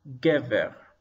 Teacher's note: So in this word, we read gimel followed by segel, ge, and then beit, soft beit, followed by segel, and resh, ver, gever. And notice that the accent is on the first syllable